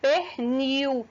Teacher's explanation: a palavra pernil o l ele tem som de u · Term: ditongo